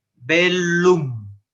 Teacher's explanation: la doble l se pronuncia por separado